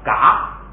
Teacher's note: 现在呢，低调不变，还是2声，只变成不送气，就变成了嘎